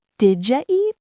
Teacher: The did you becomes didja.